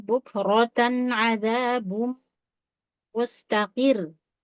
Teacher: Perhatikan di bukrota rohnya tebal